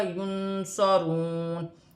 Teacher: نون ساکن کے بعد سواد ہے تو نون ساکن میں اخفا ہوگا کیونکہ سواد حرف اخفا میں سے ہے ، واو ساکن سے پہلے پیش ہے تو واو مدہ بنے